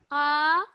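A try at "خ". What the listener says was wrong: Pronunciation of this letter, it's a bit more thicker. Okay. So your mouth should be a bit more rounded.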